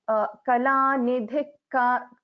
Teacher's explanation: So we don't pronounce the full visarga here.